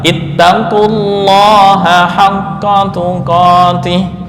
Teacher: karena lam didahului oleh dommah maka lam pada lafal Allah dibaca tebal · lam pada lafdzul jalalah dibaca tafkhim